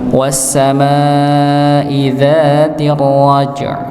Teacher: Nggih, ketika kita temukan antara huruf yang dia punya sifat qalqalah bertemu dengan sukun setelahnya, maka huruf yang qalqalah itu jangan dipantulkan. Tapi dia dilebihkan pada sifat syiddahnya, sifat yang tertahan.